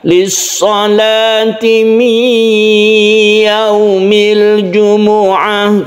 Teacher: Ini kita panjangkan karena nun mati bertemu dengan ya idgham bi gunna. Mi sambil kita tekan ke ya, sambil kita dengungkan